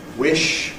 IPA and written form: wɪʃ (wish)